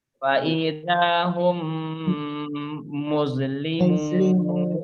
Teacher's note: maka membacanya adalah menyuarakan mim rangkap double, ditasdidkan. Karena ada dua tuh mimnya.